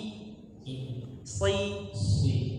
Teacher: jangan bibirnya jangan dibulatkan, jangan shi tapi si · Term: huruf shad